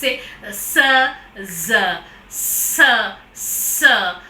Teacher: the articulators are the tip and blade of the tongue coming very near the alveolar ridge but the gap is there for the air to come out with friction